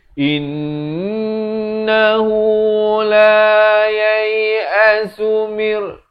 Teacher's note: dengungkan di sini wajibul gunnah 2 harakat